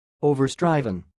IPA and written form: ˌoʊ.vərˈstrɪv.ən (overstriven)